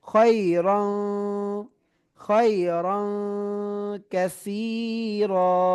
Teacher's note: ঠিক আছে, এরপরে খায়রান কাসীরা, এখানে তানবিন এসেছে, তাজবিদের নিয়ম, তানবিন এসেছে, তানবিনের পরে কি হরফ আসছে, ইকফার হরফ কাফ এসেছে, তাহলে আমরা নাকের বাসিতে নিয়ে পড়বো